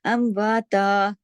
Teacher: امواتا، یہ تا کے اوپر ہم تا 2 زبر تن پہ ہم رکے ہیں نا، تو یہ جو جب ہم تنوین آ جاتی ہے اور ہم رک جاتے ہیں تو یہ مد عوض کہلاتی ہے اور یہ 2 حرکات کھینچی جاتی ہے